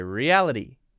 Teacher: it's the light d sound to replace the t